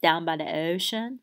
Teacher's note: the o is really really pronounced further forward in your mouth we call that o fronting right shin right so this is